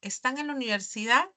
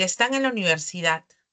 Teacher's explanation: Pero si yo más bien lo convierto en un enunciado afirmativo, pues voy a decir, están en la universidad, mi inflexión de voz va a descender